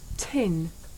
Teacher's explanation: the puff of air at the beginning of tin makes the paper move